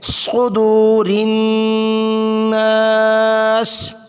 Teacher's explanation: صاد موٹا کر کے پڑھیں گے، سین سے جدا کریں گے، سین کو باریک پڑھا جاتا ہے، صاد کو موٹا کیا جاتا ہے